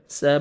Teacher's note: با حروف قلقلہ میں سے ہے جو 5 لیٹرز ہیں، قاف طا با جیم دال، جب بھی یہ ساکن آئیں گے تو ڈبل ساؤنڈ آئے گا